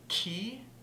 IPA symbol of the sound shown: k